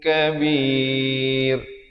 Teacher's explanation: Ra-nya jadi nipis. Bir bukan bir, itu tebal, salah ya.